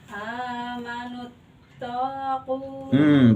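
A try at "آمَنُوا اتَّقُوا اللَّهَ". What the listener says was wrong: Taknya nggak ada alif.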